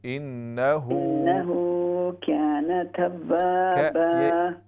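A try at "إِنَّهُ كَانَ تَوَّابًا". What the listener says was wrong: ये जो है काफ को बहुत ज्यादा आप या की तरफ पढ़ दे। काना, इन्नहु काना, इन्नहु हा उल्टा पेश, हु ये वाव की तरह पढ़ा जाता है।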